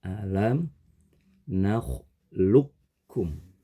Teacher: huruf q sukun dibaca dengan cara dimasukkan ke huruf Kaf melebur ke huruf Kaf digabungkan ke huruf Kaf setelah dimasukkan maka huruf qnya tidak terlihat dalam bunyi alam naklukum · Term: Idgham mutaqoribain, idgham